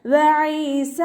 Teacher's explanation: സൗണ്ടിനെ വ്യക്തമാക്കിയിട്ട് ഉച്ചരിക്കുക. ഈസ എന്നായി പോവരുത്, ഹംസയുടെ സൗണ്ടായി പോവാതെ നോക്കുക.